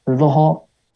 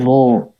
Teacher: Jahar dia. Enggak hamas. Hamas itu keluar udara.